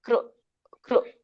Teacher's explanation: ಮತ್ತೆ ಒತ್ತಿ ಕ್ರೂ ಅಂತ ಹೇಳ್ಬೇಡಿ, ಕ್ರೂ ಊದ್ಬೇಡಿ. ಬಾಯಿಂದ ತುಟಿ ಊದ್ತೀವಲ್ಲ ಹಾಗೆ ಕ್ರೂ ಅಂತ ಊದಿ ಹೇಳ್ಬೇಡಿ. ಪ್ರಾಕೃತ ಕೃ ಹೇಗ್ ಬರುತ್ತಲ್ಲ ಹಾಗೆ ಹೇಳಿ ಸಾಮಾನ್ಯವಾಗಿ.